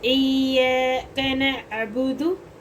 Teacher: बा और दाल को बिल्कुल लंबा नहीं करेंगे क्योंकि हरकत है